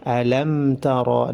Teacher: Alam tara, mim sukun bertemu dengan ta dibaca izhar. Alam tara dibaca jelas mimnya karena dihukumi izhar syafawi.